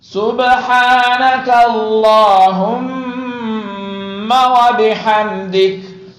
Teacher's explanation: اچھا میم کو کھینچنا نہیں ہے، صرف غنہ کرنا ہے